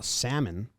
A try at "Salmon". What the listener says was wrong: No L.